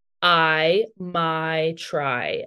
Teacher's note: pronunciation of the I diphthong. So that's like a vowel that changes